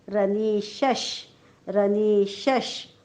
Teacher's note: शच्या पुढे विसर्ग, विसर्गाच्या पुढे श आलेला आहे म्हणून विसर्गाचा उच्चार आपण हलंत श करणार आहोत. उच्चार काय होईल रनीशश.